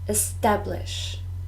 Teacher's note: three syllables and we stress the second